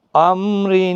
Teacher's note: دو زیر کی وجہ سے را باریک پڑھا جا رہا ہے